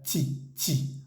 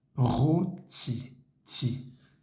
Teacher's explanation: Si miran su lengua, si se miran en un espejo, van a ver que la lengua no sale entre los dientes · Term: esa T en francés